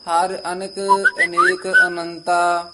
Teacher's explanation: ਅਨਿਕ ਦੀ ਨਨੇ ਦੀ ਸਿਹਾਰੀ ਉਚਾਰਨ ਕਰਨੀ ਹੈ